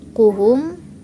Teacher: Huruf H bertemu dengan mim mati, maka disebut dengan izar safawi dan cara membacanya itu tidak dengung.